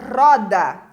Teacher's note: Roda só tem um R, mas na hora que eu pronuncio, ela é vibrante, ela é forte, né? Como se fosse dois R's na pronúncia.